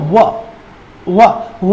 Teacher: व में आप देख रहे हैं कि होंठ जो है आधे आधे स्पर्श कर रहे हैं, बीच में से मुख द्वार खुला है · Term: अर्ध स्वर